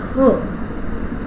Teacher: sounds like h, which is created through glottis, glottal sounds